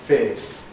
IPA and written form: feːs (face)